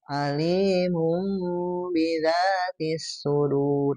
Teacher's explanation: menggunakan pengucapan mim yang disamarkan ya dan menahannya selama 2 harokat. Al-gunnatu ma'zalikal ikhfa gitu ya.